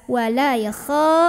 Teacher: kha-nya naikin pangkal lidah